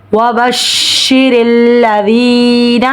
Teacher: واو کے لیے ہونٹوں کو گول کریں گے، شین میں تفشی ادا ہوگی، شین پر تشدید آ رہی ہے، جماؤں کے ساتھ پڑھیں گے